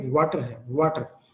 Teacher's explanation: इसमें आपके lips round होते हैं और आवाज पैदा करते हैं दोनों मिलके, लेकिन बाकी हल्क में कोई खास रुकावट पैदा नहीं होती, लेकिन थोड़ी सी जो कि पैदा होती है, इसलिए हम इसको सेमी वाउल का दर्जा भी देते हैं कुछ लैंग्वेज में, कहते हैं कि ये आधा वाउल है।